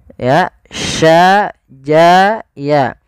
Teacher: Makhrajnya adalah tengah lidah kita. Ja, sya, ya itu tengah lidah. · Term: shin